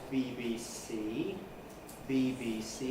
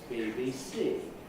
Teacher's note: we tend to put an accent on the first and the last of the three items but not on the middle one